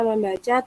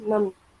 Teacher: Misalnya, kata membaca terdiri dari dua morfem, yaitu morfem men dan morfem baca. Akibat pertemuan kedua morfem itu, fonem nasal n pada morfem men berubah sehingga men menjadi mem.